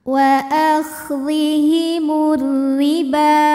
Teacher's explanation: alif lam tidak kita baca jadi langsung masuk ke huruf ro · Karena ada alif lam yang menghadapi huruf syamsiyah yaitu huruf ra. Maka cara bacanya alif lam tidak kita baca, jadi langsung masuk ke huruf ra. · Huruf ra dibunyikan secara tarqiq sebab hurufnya berbaris kasrah. Maka cara bacanya tipis, pangkal lidah kita tidak perlu diangkat. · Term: Idgham Syamsi, alif lam syamsiyah